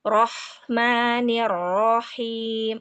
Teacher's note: pangkal lidahnya terangkat dan suaranya menjadi tebal